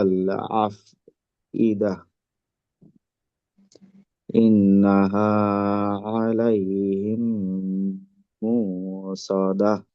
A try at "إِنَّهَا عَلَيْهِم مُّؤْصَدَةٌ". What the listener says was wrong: আচ্ছা, এখানে মুকসদা হামজাতে আওয়াজটা আটকাবে। আর প্রথমে ইন গুন্নাতে এক আলিফের থেকে বেশি সময় দিবেন।